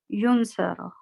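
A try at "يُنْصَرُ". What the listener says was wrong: yunsaru, This dhamma, this is a very, very important part of a faile mudare. You see, past tense has a fatha at the end, right? And present tense in default condition has a dhamma at the end.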